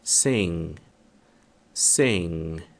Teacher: você se prepara para pronunciar o G, mas você não emite o som.